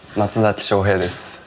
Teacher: su at the end is just sound, just a consonant. So pitch isn't clear. Actually, you can't tell the pitch is high or low, but it's supposed to be low.